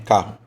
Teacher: Porque ele substitui, você não fala vários R's. Você não fala carro, você fala só um R, carro. E fala rápido e no final fica um U